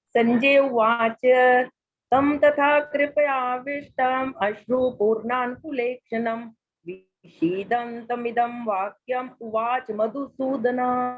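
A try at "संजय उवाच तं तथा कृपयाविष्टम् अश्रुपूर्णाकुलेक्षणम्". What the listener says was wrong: बहुत सुंदर बीवी जी।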